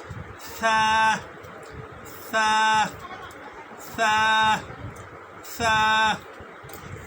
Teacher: জিহ্বার আগা থেকে সামনের উপরে দুই দাঁতের আগার সঙ্গে লাগাইয়া পড়তে হয় সা। এরকম এই যে জিহ্বাটা আছে, জিহ্বাটা আমরা পড়ার সময় জিহ্বাটা যাবে এই দাঁতের আগার সামনে তারপরে উচ্চারিত হবে সা সা সা সা।